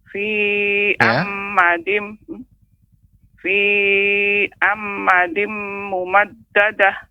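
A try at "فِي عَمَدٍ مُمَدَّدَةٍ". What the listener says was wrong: Kalau fi jangan terlalu panjang pengucapannya, cukup ditekan fi amadin. Tapi kalau fi amadin maka dikhawatirkan bisa berlebih dari 2 harokat. Kemudian amadin tidak ada tasydid Ibu. Jadi tidak amadin, akan tetapi amadin, fi amadin.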